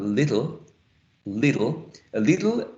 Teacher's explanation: we have to stress the first syllable